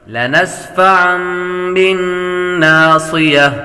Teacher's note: نون مشدد پر ہمیشہ غنہ ہوتا ہے۔